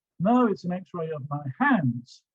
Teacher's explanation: The stress is on hands.